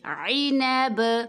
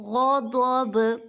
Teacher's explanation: غضب، ب، جھٹکے کی آواز نکالیں گے با میں